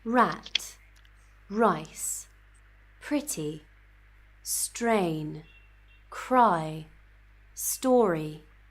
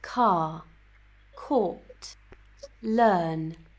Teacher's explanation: if our letter R is coming after a vowel then we will not pronounce it. It will be kind of silent.